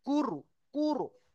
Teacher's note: মুখে গোল করতে হবে কারণ র সাকিনের ডান দিকে পেশ এসছে রপুর, ঠিক আছে? কফ র পেশ কুরু, হামজা খাড়া যাবার আ, কুরু আ, নুন দু পেশ নুন, কুরু আ নুন, বুঝে এসছে?